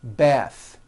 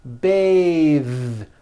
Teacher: The word bath is a noun with an unvoiced TH. Bath. But when you change it into a verb, to bathe, the vowel changes to an A sound and the TH is voiced.